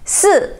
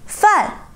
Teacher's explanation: Fourth tone is a falling tone, which explains itself, falling down.